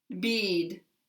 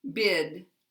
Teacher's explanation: the difference is that e is tense and long and I is LAX and short